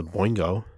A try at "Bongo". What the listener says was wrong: Bongo. There's no I. It's B-O-N-G-O.